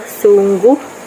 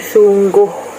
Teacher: mengalami perubahan vokal tinggi U di akhir suku kata kepada vokal rendah O di dalam dialek Terengganu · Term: perendahan vokal